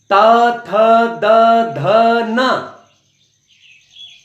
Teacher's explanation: तावर्ग दंती व्यंजन कहे जाते हैं, दांत के स्पर्श से इनको हम बोल पाते हैं। जुबान दांत में आके टकराएगी।